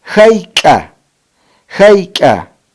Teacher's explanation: la grafía de doble C escrito en Hayqa para decir cuánto se articula en el velo del paladar, acompañada con una glotal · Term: velar glotal